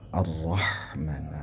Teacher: ha-nya itu harus berdesis